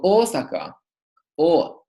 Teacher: Like in the word Ōsaka, to say the Japanese city Ōsaka, we pronounce a long O at the beginning